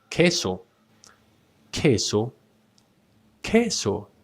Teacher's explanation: the U becomes mute and you just say K